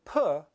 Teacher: However, there's one slight difference between p and b. When I say p, I just let the air come out, I briefly stop it, and let it explode out of my mouth